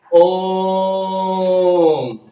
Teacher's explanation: प्लुप्त स्वर का मतलब होता है कि त्रिक मात्रा मतलब 3 मात्राएं, तो इसे खींचकर पढ़ना होता है, लंबा।